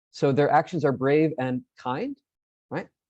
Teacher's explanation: just repeating and having that Rising intonation kind of makes it a question